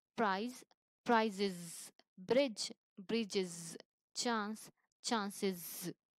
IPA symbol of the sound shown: iz